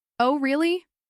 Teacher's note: If you use a rising tone, it can show genuine surprise or curiosity.